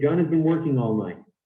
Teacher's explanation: These words, has and been, and the ing at the end, these are function words, and we don't stress them. So we say, John has been working all night.